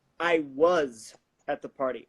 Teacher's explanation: I'm contradicting him so I'm gonna stress the was there